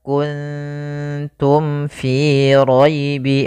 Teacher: kan makhrajnya daripada bibir kita maka mim itu kan rapat Ma maka di sini harus jelas suara mimnya tidak boleh ditahan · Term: izhar syafawi